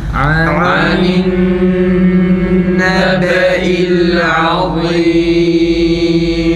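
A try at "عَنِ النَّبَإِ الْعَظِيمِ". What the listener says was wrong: Za'nın esesi iyi çıksın. I değil.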